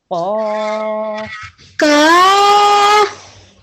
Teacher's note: Because this is an alif mad, we pronounce the qaf for 2 seconds.